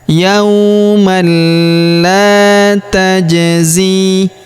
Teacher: huruf la kita panjangkan 2 harokat karena terdapat alif di depannya